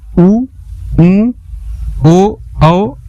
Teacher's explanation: वे स्वर जिनके उच्चारण में होठों की आकृति वृत्त के समान गोले हो जाती हैं, वृत्त के समान ओठों की आकृति हो जाती है, उन्हें वृत्ताकार स्वर कहते हैं। · जैसे उ बोलिए, आपका इसमें ओठों की आकृति वृत्त के समान गोल हो जा रही है